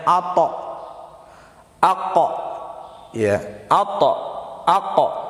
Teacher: Qa dan ta ketika sukun ataupun dia dalam keadaan waqaf maka bunyi pantulannya adalah o. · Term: huruf qalqalah